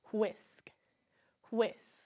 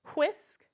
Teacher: if we put our fingers up to our mouth and we say the word whisk we feel a stronger burst of air